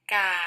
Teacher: This is the low tone, and the pitch drops rapidly.